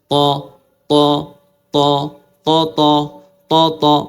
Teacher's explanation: ত ত যখন এইভাবে সোজা রাখবেন একটু শক্ত রাখবেন দেখবেন কি তালু আর জিহার মাঝখানে একটু বাতাস সৃষ্টি হয়েছে আটকানো বাতাস ওই আটকানো বাতাস আপনার তকে মোটা করে দেবে